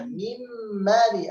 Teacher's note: أدخلنا النون في الميم فأصبح الميم كأنه حرف واحد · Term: الإدغام